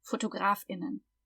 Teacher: If we're talking, we make a glottal stop